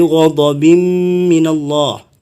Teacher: tanwin ketemu mim ya. Ini sama bacaan dengung juga, itu bi gunnah.